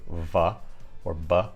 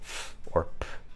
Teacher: if I say V or B those are voiced sounds and if I say F or P those are unvoiced sounds